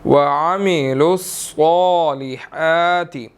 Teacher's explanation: صاد کے اوپر کھڑی زبر ہے اور موٹا بھی ادا کریں گے اور 1 سیکنڈ لمبا بھی کرنا ہے